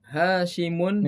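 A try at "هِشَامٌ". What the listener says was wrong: Ini bukan Hasimun ya, tapi Hisyamun. Hisyamun. Kalau Hasim itu Hanya yang panjang. Kalau sinnya yang panjang berarti Hisyamun.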